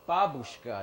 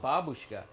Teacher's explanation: the accent is on the first syllable babushka